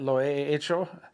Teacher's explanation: You'll hear a lot of people say for like, I've done it, lo he hecho, since H-E is silent, and then the H-E, the H is silent, so you got a, lo he, and then hecho starts with an H, that's silent, and then you go with the E, so those two E's run together